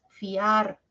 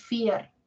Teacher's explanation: de las dos vocales la abierta la a suena más fiar no es fier Sí entonces ojito ojito no siempre los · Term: diptongo